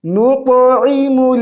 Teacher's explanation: ولم نکو اگلے پیج پہ نطعم نون کو طا کے ساتھ طا کو موٹی آواز سے بھی پڑھیں گے قلقلہ بھی کریں گے